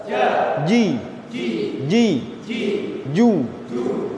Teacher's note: Tengah lidah ditemukan dengan langit-langit bagian depan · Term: huruf Jim